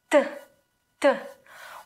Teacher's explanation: When we say Ukrainian T, we touch our upper teeth with our tongue, t, t, while in English we touch the alveoles, t, t, right?